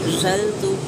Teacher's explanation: ज़ा को सख्ती से अदा करेंगे, सिटी वाला हरूफ है